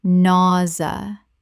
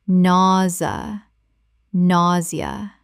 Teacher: 2 syllables in natural speech. The zia makes a z sound.